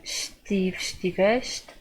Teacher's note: So remember, as usual, the very end, the ão, is very soft in terms of pronunciation, and we're always making the E soft with the estive, estiveste, and the S is sh sounding